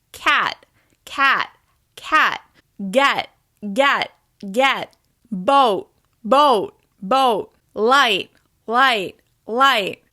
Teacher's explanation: My tongue is still touching the ridge of my mouth, but I'm not releasing air at the end of these particular words. This is especially obvious when one of these words comes at the end of your sentence. · You want to end in the T position without releasing that extra air at the end. Pulling back from the T sound will help you sound more American.